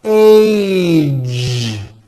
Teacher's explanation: Now the American J sound at the ends of words. Be sure to keep the voicing going throughout the whole word. Age. It's not H, it's age with a voiced ending.